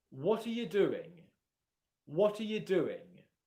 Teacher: the vast majority of the time that I say the word you, it's unstressed and quieter · the stressed words in that question are what and doing. The other two words, are and you, are unstressed, and the only reason that they're there is to make the sentence grammatically correct, but they don't really convey much meaning in the sentence.